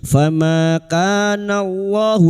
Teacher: Allahu lam jalalah yang di dawli fathah dibaca tafkim. Nallahu liyadhlimahum wala mim sukun bertemu wawu idhar safawi mim sukun dibaca jelas tanpa mendengung.